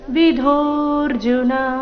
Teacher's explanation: ಧೋ ಧೋ ಮಹಾಪ್ರಾಣ ದೀರ್ಘ